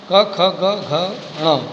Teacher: ये कंठ से उच्चारित हैं